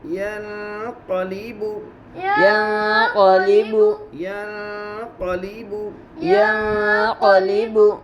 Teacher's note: نون ساکن کے بعد اخفا کے 15 حروف میں سے قاف ہے, اس لیے نون کی آواز کو ناک میں چھپا کر پڑھیں گے, اس کو اخفا کہتے ہیں. قاف کے اوپر زبر ہے, زبر کو جلدی پڑھے تھوڑا بھی نہ کھینچے.